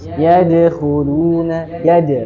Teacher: Huruf dal ini punya sifat qalqalah karena dia dalam keadaan sukun.